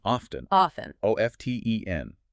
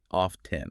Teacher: In American English, the T is usually silent. Often in British English and some other dialects, you might hear the T pronounced off 10.